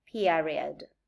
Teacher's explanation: in the case of the diphthong ia, it may be rising in unstressed syllables, like in the case of period. The second ia is rising because the first element is not stronger than the second one.